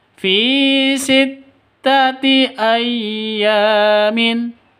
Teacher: fi-nya harus dibaca panjang karena ya mati diawali dengan kasrah pasangannya Ya mati itu kasrah baru dibaca panjang.